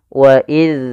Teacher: kita harus kita tempelkan dengan gigi seri atas kita wa Seraya huruf dalal itu memiliki sifat yaitu tertahannya nafas